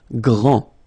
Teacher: final D not pronounced, okay? Gr, gr, gr, gr, and then the nasal en, grand, okay?